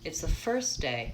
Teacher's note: All right, so right away, it's the first day. You can hear it's just really condensed, reduced and short, but first day, I have to stretch those up.